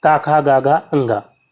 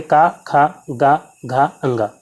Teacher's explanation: कंठ व्यंजन में जो है का वर्ग के सभी वर्ण आ जाते हैं, का, खा, गा, घा, अंगा। तो इनका जो उच्चारण है वो हमारी जीभ का जो पिछला हिस्सा है कंठ को टच करके इनका उच्चारण करती है।